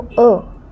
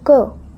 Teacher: क का जब हम उच्चारण कर रहे हैं तो इसकी अगर हम ध्वनि पर ध्यान दें तो इसमें बाद में हमें अ की साउंड आ रही है, इसलिए ये क्या है, एक व्यंजन है।